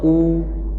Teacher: ओष्ठ प्रयोग के आधार पर स्वर जो होते हैं वो कितने प्रकार के होते हैं, तो एक व्रतमुखी होते हैं, जिन्हें बोलने पर होंठ गोलाकार हो जाएं उनको क्या कहते हैं, व्रतमुखी।